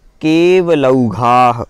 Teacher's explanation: लौघाः दीर्घ आ है और उसमें विसर्ग भी दिया हुआ है, तो घाः बोलना है, जोर से बोलना है घा को।